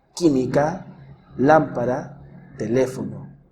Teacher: las palabras esdrújulas son aquellas cuya sílaba tónica es la antepenúltima